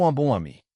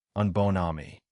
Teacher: It is not a nasal bond followed by an extra N. The N becomes the start of the next syllable, so it stops nasalizing the vowel before it. You get an oral vowel plus N, un bon ami.